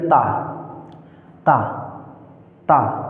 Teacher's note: ता जी दांत को स्पर्श कर रही है तो ये दंत से उच्चारित होता है